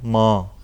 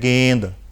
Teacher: ਬਿੰਦੀ ਦੀ ਆਵਾਜ਼ ਨੱਕ ਵਿੱਚ ਆਉਂਦੀ ਹੈ। ਜੇ ਤੁਸੀਂ ਸ਼ਬਦ ਲਿਖਦੇ ਹੋ ਮਾਂ, ਕੰਨੇ ਦੇ ਨਾਲ ਬਿੰਦੀ ਆਈ ਹੈ, ਨੱਕ ਵਿੱਚ ਆਵਾਜ਼ ਆਈ ਹੈ। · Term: ਅਨੁਨਾਸਿਕ ਉਚਾਰਨ